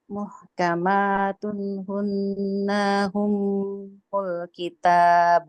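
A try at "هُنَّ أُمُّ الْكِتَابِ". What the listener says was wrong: Nah, awas nanya jadi panjang tadi. Muhkamatun hunna ummul kitab.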